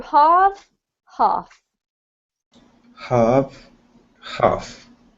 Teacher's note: even with the US accent this doesn't actually have an r in it so you do need to get rid of the r sound